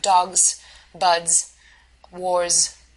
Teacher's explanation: S letter actually represents a Z sound rather than an S sound